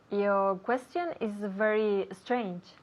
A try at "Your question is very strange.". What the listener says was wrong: Lo mejor de lo que acabas de decir ha sido tu pronunciación de la palabra strange.